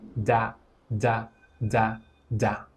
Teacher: If you pay attention in English, when you say the letter D, D, the very tip of your tongue touches the gums right behind your top front teeth, your front teeth come together and then you release a small burst of air as you say D as in da da da da.